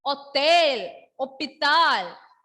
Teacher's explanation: In these two words, I didn't pronounce H.